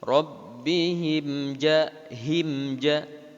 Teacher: Mim mati berjumpa dengan huruf ja, suara mimnya jelas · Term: izhar safawi